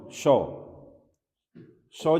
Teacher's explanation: श ध्वनि का जो उच्चारण स्थल होता है वो तालु होता है